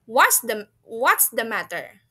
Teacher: It has a higher sound and then fall ya, atau fallen, atau ke bawah dianya lower sound ya.